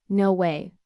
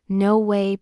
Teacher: Notice how your voice goes up on way. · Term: inonation